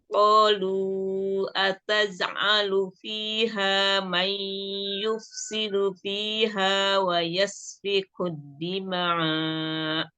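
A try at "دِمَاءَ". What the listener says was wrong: Itu dimanya tadi kok kayak ada keseret ya, harusnya ya sedikit hentakan aja ya kalau pas mau wakaf.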